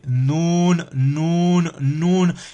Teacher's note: c'est la pointe de la langue qui vient s'appuyer contre la muqueuse palatine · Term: le Noun